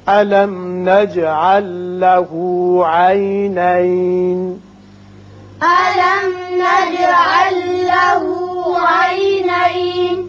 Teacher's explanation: میم پر اظہار شفوی، جیم کی صفت قلقلہ، یہاں لام ساکن آگے لام سے ملائیں گے، ادغام اس کا بغیر غنہ ہوگا. عینین یہ وصل کی صورت میں، وقت کی صورت میں نون ساکن.